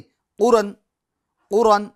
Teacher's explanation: अब इसको यूं भी नहीं पढ़ना है, क़ुरन, क़ुरन। क़ाफ के पेश की जो हरकत है इसको खींचना नहीं है, हरकत को खींचना नहीं है।